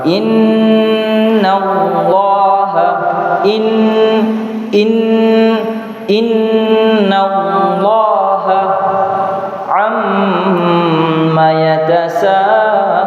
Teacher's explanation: cara membaca nun yang bertasydid dan mim yang bertasydid adalah didengunkan sepanjang atau sebanyak 2 harokat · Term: nun dan mim yang bertasydid